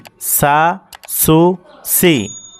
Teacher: এই তিনটা অক্ষর উচ্চারণের ক্ষেত্রে একটু সফির হবে, শীষ আওয়াজ হবে, এই আওয়াজটা বের হতে হবে।